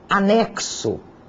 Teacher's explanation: O X, além disso, pode ter um som de KS, como se eu percebesse um som de K seguido de uma sibilante S.